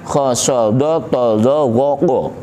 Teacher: berbunyi o tebal o bibirnya ikut moncong tebal